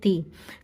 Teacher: ini huruf ta, sedikit ada hamsnya, ada desisnya ti. Kemudian ada lam sukun, ditawasudkan sebentar, ditahan sebentar.